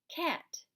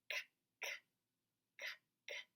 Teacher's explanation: You hear the k sound. It's made at the back of your throat. K. It's not voiced.